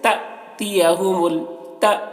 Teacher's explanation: جب حمزہ کے اوپر جزم ہو تو اس کو حمزہ ساکنہ بولتے ہیں، اور حمزہ ساکنہ کا پڑھنے میں جھٹکا ہوتا ہے ، تو جھٹکا لگا کے پڑھیں گے، جیسے تأتیہم التا، ایسے